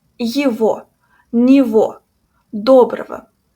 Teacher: When the letter G is in between two letters O or between Е and O, it sounds like V.